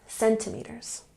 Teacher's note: Put the emphasis here on the first syllable, centimeters.